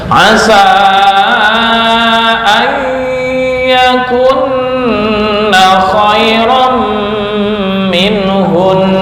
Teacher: ada nun yang bertasdid, ini ditahan 2 ketukan, 2 sampai 3 ketukan